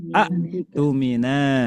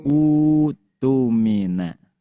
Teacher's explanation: jadi panjang dua harakat